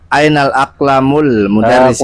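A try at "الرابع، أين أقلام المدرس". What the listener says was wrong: Kurang. Panjang pendeknya kurang. Sinya jangan mudarrisi. Panjang itu. Ngikuti intonasi.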